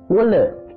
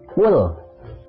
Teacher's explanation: lam sukun tidak boleh dibaca mantul